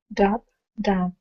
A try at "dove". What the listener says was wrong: Again, you gotta stretch it out. Dove. You gotta stretch it out more. I can't hear the V. I hear dove, dove. I want to hear dub, dove.